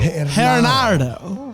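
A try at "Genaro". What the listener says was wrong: Nope. No D in there.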